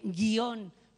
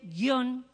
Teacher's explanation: Da igual que uno pronuncie guión con un hiato o que pronuncie guión con un diptongo. A efectos de acentuación gráfica, la información es la misma, la tónica es la O.